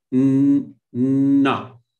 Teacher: when you pronounce na, you realize that, you are feeling some kind of vibration in the nasal cavity.